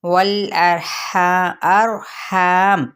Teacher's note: हा वस्ते हल्क से अदा करते हुए अलिफ मद्दा का कायदा